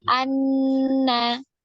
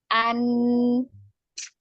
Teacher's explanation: Bisa dirasakan ya bahwa makhrajnya ada di ujung lidah menempel pada gusi ya bagian atas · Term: huruf nun